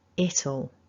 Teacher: And so what we're doing is, first of all, we lose that W and our I becomes a weak schwa. Ul.